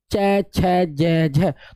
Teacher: तालू पे जीव लगेगी इसलिए तालव्य है